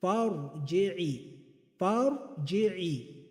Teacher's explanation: the raw has to be read with a heavy mouth, with tafkhim